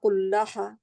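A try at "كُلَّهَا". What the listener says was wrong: हा जो है वो मोटी नहीं, कुल्हा नहीं होगा।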